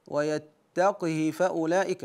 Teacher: ويتقه فاولئك هنا قرا ورش بكسر القاف وصله الهاء ويتق فاولئك اما حفص فقرا بسكون القاف واختلاس الهاء